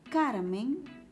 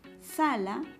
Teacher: con la mayor fuerza de voz en la penúltima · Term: grave